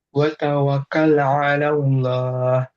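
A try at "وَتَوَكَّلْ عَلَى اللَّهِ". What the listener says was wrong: Kurang sempurnya tasdidnya. Wa tawak, nah disukun dulu. Wa tawakkal.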